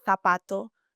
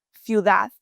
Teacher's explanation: Often sounds like a soft TH in Spanish, like zapato, shoe, ciudad, which is city.